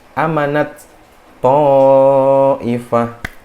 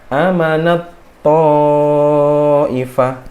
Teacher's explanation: tak di sini yang mati, yang sukun itu dia harus dimasukkan ke huruf setelahnya. Jadinya hilang hamesnya. Dia langsung menuju ke huruf setelahnya. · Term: idgham mutajanisain